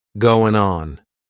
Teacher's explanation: we're going to drop that G at the end of the word going.